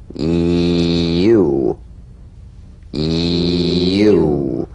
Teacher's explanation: Feel the Y buzz quickly cut off as it slides into the following vowel.